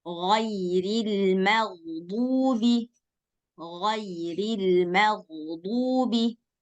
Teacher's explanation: huruf kha dan ghain dia masuk lebih ke dalam lagi daripada huruf ha dan ain